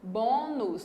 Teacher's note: Bônus, 2 sílabas. E a sílaba mais forte é a penúltima.